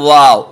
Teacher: वाव, इसमें आपके होंठ गोल हो जाएंगे